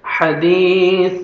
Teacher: هل أتاك، کاف کو باریک پڑھیں گے، هل أتاك حا پڑھیں گے، 1 سیکنڈ دال کو کھینچتے ہیں، یا جزم سے پہلے زیر ہے، حدیث، سا پڑھیں گے، سامنے والے جو دو دانت ہیں ان کے نیچے زبان کو ٹچ کریں گے تو سا نرمی سے ادا ہوئے گا